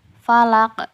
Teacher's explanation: Untuk huruf qaf dan to, pantulannya mendekati suara o karena kedua huruf ini tersifati oleh isti'la. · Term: qalqalah kubro